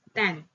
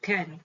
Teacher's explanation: For example, can is pronounced ten instead of can, fronting.